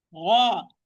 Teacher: It's heavy. Gha. This is the second level of tafkhim. Mufaham letter which has a fatha only, not followed by alif.